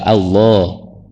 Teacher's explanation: Allah itu kan fathah. Bunyinya O tebal.